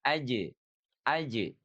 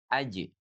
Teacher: Tapi qalqalahnya ringan saja ya, karena dia huruf istifal